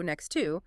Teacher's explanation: You have an X sound, which is really a K, and an S sound followed immediately by a T, and then another T from the word two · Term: consonant clusters